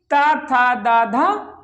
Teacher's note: हमारी जीवा क्या करती है, दांतों को स्पर्श करती है, इसलिए आपके कौन से व्यंजन है, ये आपके दंत व्यंजन है